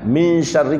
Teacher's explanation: bunyi satu harokat kemudian hilang. Itu namanya ikhfa yang wusta.